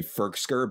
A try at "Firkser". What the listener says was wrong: I mean, first of all, you're adding a K to his name. It's Firkser. Not Firkser. Firkser. Pronounce it right. He didn't go to Harvard for 4 years to be called Firkser.